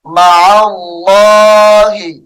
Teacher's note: جلالت اللہ کا لام موٹا کر کے پڑھا جائے گا